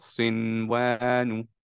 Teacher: Similarly এই ওয়ার্ডটা খেয়াল করে দেখি, এইখানেও যেহেতু সেম ওয়ার্ডের মধ্যে নুন সুকুনের পরে ওয়াও আসছে, আমরা ইদগাম করব না, নুনটাকে ইজহার হিসেবে পড়বো, ক্লিয়ার হিসেবে পড়বো।